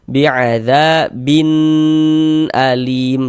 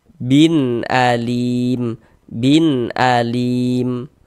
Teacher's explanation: Dia tidak didengungkan, tidak digunahkan. Jadi pendek saja.